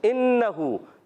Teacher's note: نون مشدد ہے، نون مشدد میں ہمیشہ ایک الف کا غنہ ہوتا ہے